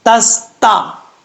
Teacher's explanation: पहले जो ता है दोनों ता को बारीक पढ़ेंगे, सीन में सीटी आएगी क्योंकि हुरूफ सफीरिया में से है